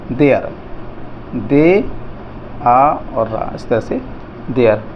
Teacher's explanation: इसमें ए और आ की आवाज़ आएगी